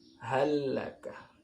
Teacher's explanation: Lam sukun bertemu lam. Ini diidghamkan. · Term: idgham mutamatsilain